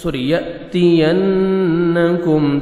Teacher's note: تا کو باریک پڑھیں گے · نون مشدد نوز میں ساؤنڈ لے کے جائیں گے. یأتینکم کاف آپ نے باریک پڑھنا ہے.